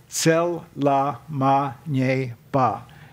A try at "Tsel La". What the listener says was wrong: Tsela. It's not cell. It's tse. Like Dr. Che.